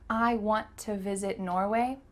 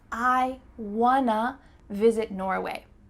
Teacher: the word to changed to uh